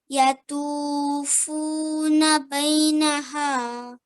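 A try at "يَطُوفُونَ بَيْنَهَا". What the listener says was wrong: So do prolong for 2 seconds on this one.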